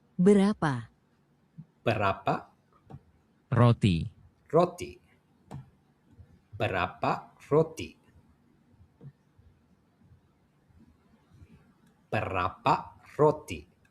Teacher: So R is a light tap.